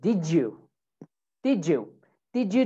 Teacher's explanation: if we have a d okay and then we have a y sound d and a y so it makes a j sound